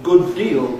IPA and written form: ˈgʊd ˋdiːl (good deal)